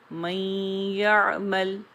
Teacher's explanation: پہلی مثال دیکھیے، من یعمل، اس میں نون اور یا کا جو ادغام ہو رہا ہے تو یا کو ادا کرتے وقت نون کی خوشبو شامل ہو رہی ہے، اسی لیے یہ ادغام ناقص ہوگا.